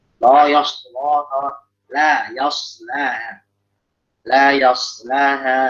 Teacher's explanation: shadnya sukun ya, lamnya sebelumnya tipis, lam yang setelahnya tipis, jangan sampai lamnya ngikut tebal.